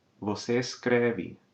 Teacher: the E in the stem of beber, escrever, and similar verbs is going to open in the third person singular and plural forms